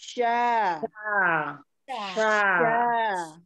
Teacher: udah bisa dirasain syaa tapi bibirnya diam itu hanya tugas eh lidah bagian tengah bertemu dengan langit-langit yang ditengah